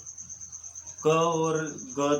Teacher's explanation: क और ग ध्वनि जो है, इन ध्वनियों के उच्चारण में हवा की मात्रा जो है वह कम लगती है